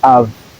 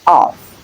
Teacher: Labodental fricative sound is that sound produced with the help of the upper teeth and the lower lip · we have the schwa sound followed by the voiced labiodental fricative sound